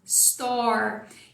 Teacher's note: você vai terminar a palavra com a língua lá atrás fazendo o R, retroflexo.